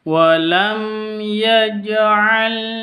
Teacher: Wam mim sukun berjumpa dengan ya cara bacanya jelas dibaca jelas karena izhar syafawi